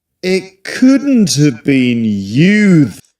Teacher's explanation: So what he does is to drop the H